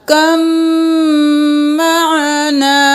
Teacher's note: काफ ज़बर मीम कम, अब मीम पर तशदीद है, गुन्ना भी करेंगे, बा को नहीं पढ़ेंगे। कम, मीम ज़बर मा, कम, आइन ज़बर आ, नून ज़बर अलिफ ना, कम माना।